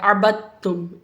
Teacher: دال کو نہیں پڑھا ہم نے، اور ہم نے با کو تا سے ملا دیا